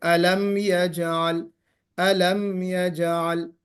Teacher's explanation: میم پر اظہار ہوگا، بلا غنہ پڑھیں گے